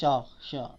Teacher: है तो मूर्धन्य है श बिल्कुल नहीं धनती है बोलकर देखिए श दांत को टच नहीं कर रहा है होस्ट को टच कर रहा है बिल्कुल नहीं कर रहा है